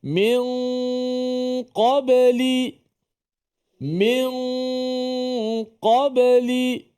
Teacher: ikhfa Hakiki yang mesti kita kena baca dengan memanjangkan suara dengung kita tu dengung kita yang berada di khaisyum tu dipanjangkan sedikit